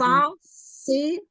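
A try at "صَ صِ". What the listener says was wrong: Ini huruf sod atau huruf sin? Yo, so. Bukan sa.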